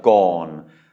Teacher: it is a mid-class consonant, but it has MYEP, so that makes it a low tone automatically